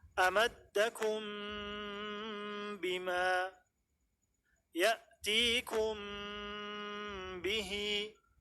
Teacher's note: Mim pada ikhfa syafawi diucapkan dengan tetap melekatkan kedua bibir secara lembut, seperti bacaan qalb, ikhlab, tidak dengan tekanan kuat.